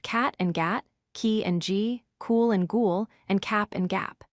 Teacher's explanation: They are both velar sounds, which means they are produced at the soft palate, which is the soft part at the back of your mouth, behind the hard palate. Since they are made in the same place, the only difference between them is the voicing.